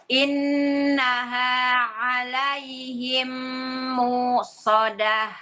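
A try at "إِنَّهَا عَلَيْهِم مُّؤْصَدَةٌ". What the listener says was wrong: Enggak, kurang panjang. Muqsadah.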